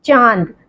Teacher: जब हम चांद बोलते हैं तो आपको गले में यहाँ पर प्रेशर फील होगा और नाक से उसका स्वर बाहर आएगा। तो इस तरीके से अनुनासिक होता है।